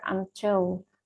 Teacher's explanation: primary stress of the word until falls on the syllable till.